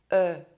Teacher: The lips are rounded and the mouth is almost open. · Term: open E sound